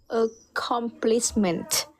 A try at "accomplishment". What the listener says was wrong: Again, accomplishment. There's something extra after comms. No S. Accomplishment.